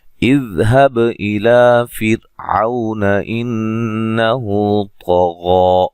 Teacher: इज़हब इला फिरऔन इन्नहु तग़ा, इज़ ज़ाल को हिलाना नहीं है, हब बा को हिला के पढ़ना है, इला ला मद असली है, फिर रा को बारीक पढ़ना, रा के साकिन से पहले ज़ेर है, औ व लीन है, ठीक है, इन नून मुशद्दद पे गुन्ना ज़रूरी है, हु मद असली है, तो को मोटा, गैन को भी मोटा अदा करना है और ये मद असली है।